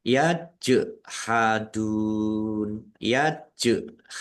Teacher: Jim sukun bacaan qalqalah dibaca memantul ditampakkan pantulannya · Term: kolkolah